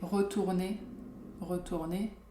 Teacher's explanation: So the first R tend to be maybe a bit stronger than the second one when the word starts with an R, right? But again, it depends of your mood or your accent.